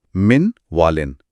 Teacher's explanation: یہاں بھی نون واو میں ضم ہو گیا اور واو پر تشدید آ گئی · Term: ادغام